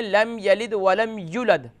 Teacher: اب دیکھیں یہاں یا کے بعد واو ہے اور یہاں واو نہیں پڑھ رہے کیونکہ یا پر حالانکہ ضمہ ہے، پیش کی علامت ہے، اور اس کے بعد واو ہے، واو پر جزم ہے، تو یا کو واو سے جوائنٹ کریں گے